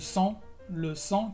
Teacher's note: Sí, por ejemplo, le sang, que es la sangre, pues la G no se pronuncia